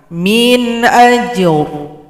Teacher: ro-nya disukunkan berikan bunyi vokal